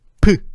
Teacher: 처음에는 공기가 막혀 있다가 파열이 일어나면서 소리가 나오고 있어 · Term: 파열음